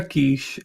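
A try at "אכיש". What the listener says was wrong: It's not Akish. Achish.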